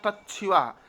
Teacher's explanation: ता के स्थान पर चा और सा के स्थान पर छा हो गया